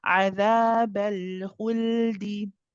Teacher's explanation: The kha in the middle is heavy. So we can't say khu, we have to say hu, hu.